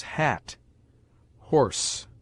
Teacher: H is a note of aspiration, and shows that the following vowel must be pronounced with a strong emission of breath